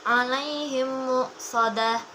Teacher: Dibacanya menjadi satu, seolah-olah menjadi mim bertasydid dengan disertai dengungan atau gunnah. Contoh bacaannya ada di surat Al-Humazah ayat 8, yaitu alaihim muqsadah. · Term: idgham mimi